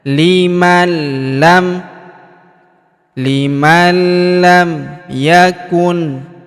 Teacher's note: huruf nun sukun bertemu huruf lam berharakat tasydid. Maka nun sukunnya melebur ke huruf lam yang berharakat tasdid. Kita tahan dan kita tekan ya.